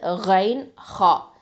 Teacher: இந்த ரெண்டும் அதனல் ஹல்க்கு, மேல் தொண்டையிலேருந்து வரும்.